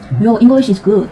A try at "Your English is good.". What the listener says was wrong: 지금 하신 말이 English 이렇게 되잖아요. English 이렇게 되잖아요. 강세가 앞쪽으로 쏠려야 돼요. 그러니까 이잉 이런 느낌으로. 삼음절을 내가 발음한다는 느낌으로. 잉. 글라.